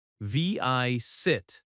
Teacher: Visit has stress on the first syllable as well.